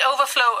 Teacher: when it's a noun overflow with the stress on their first syllable